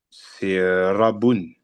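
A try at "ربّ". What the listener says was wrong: Très bien. Rabbun. Il y a une shedda sur le bas. Rabbun.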